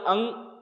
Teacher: अंग में आप नोटिस करोगे अंग नाक भी आ गई, कंठ से नहीं आ रहा, वो नाक के थ्रू बाहर आ रहा है।